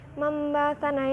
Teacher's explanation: karena nun sukun bertemu ba maka dibacanya mim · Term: iklab